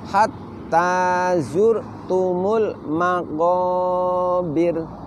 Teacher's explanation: huruf roknya kita baca dengan suara menipis suara menipis kemudian bibir kita terbuka kekanan dan kekiri seperti orang tersenyum Apa sebab karena sebelumnya berharokat kasroh perhatikan sekali lagi Hatta zurtumul